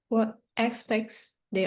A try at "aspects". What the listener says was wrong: phải X đâu, là as hẳn hoi ấy. Aspects.